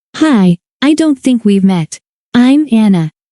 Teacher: In natural speech, the, t, in, don't, is soft. It often sounds close to I don't think, rather than a hard, clear T.